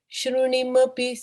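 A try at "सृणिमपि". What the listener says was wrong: Srinimapi. It is not Shri, it is Sri.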